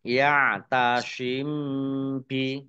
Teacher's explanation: mim sukun bertemu dengan huruf ba bacaan Ikhfa Syafawi dibaca samar-samar